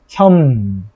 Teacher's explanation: 비읍과 리을이 와서 서로 영향을 줘가지고 비읍은 미음으로 리을은 니은으로 바뀐 경우다